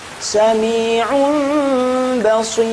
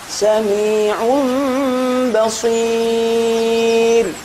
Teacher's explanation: Namun secara teori ilmu tajwid maknanya merubah atau mengganti suara nun atau tanwin dengan suara mim ketika bertemu satu huruf saja yaitu ba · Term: iqlab